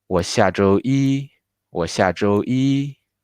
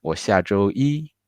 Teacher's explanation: We do the light stress. And the 周 is higher. The pitch is higher than the 我 and the 下.